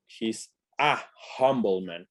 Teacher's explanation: La H sí suena, es un sonido aspirado de H, es un sonido de consonante